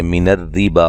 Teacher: من الربا را کو باریک پڑھیں گے، اور جب یہاں وقف کرنا پڑ جائے تو پھر با کو ایک الف کی مقدار کے برابر لمبا کریں گے.